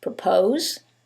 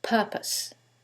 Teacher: in the first one, it's the second syllable that's stressed, and in the second one, it's the first syllable, and that changes the pronunciation completely.